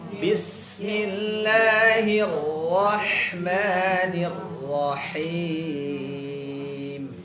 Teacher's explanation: Jadi ro itu berhenti tapi bersuara. Hir, jalan sedikit baru ro.